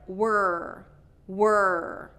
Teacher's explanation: we have to get that R in the back of the throat